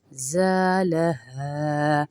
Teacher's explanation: زا کو تھوڑا سا اس لیے کھینچنے کے الف مدہ ہے ساتھ میں، زالها. ہا کو بھی اس لیے کھینچ رہے کہ اس کے ساتھ بھی الف مدہ ہے.